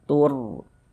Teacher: Huruf ro ini tanda sok sebelum rasok ada ini harakat dhammah. Maka huruf rasunnya dibaca tebal dibaca tafkhim. Sehingga pangkal lisan kita naik terangkat ke atas ketika kita mengucapkannya.